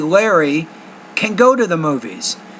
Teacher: I'm putting more stress on the word go I'm putting less stress on the word can and that makes it positive so that's my first tip remember